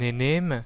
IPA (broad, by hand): ne'nem